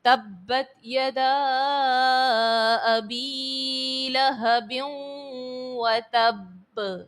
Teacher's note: لہبیوں میں تنوین کے بعد واو حرف یرملون کا ہے اور ادغام مع الغنہ یہاں پر کریں گے، غنے کے ساتھ ادغام کریں گے۔ وتب میں با جو ہے وہ جماؤں کے ساتھ ادا کریں گے۔